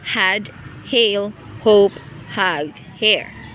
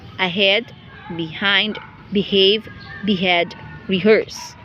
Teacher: the glottal fricative initial